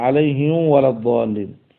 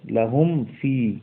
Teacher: আপনি যদি ঠোঁট না লাগান, তাহলে এখানে এটা ইদগামের মতো হয়ে যাবে। আচ্ছা, তো এটার হুকুম হচ্ছে ইজহার।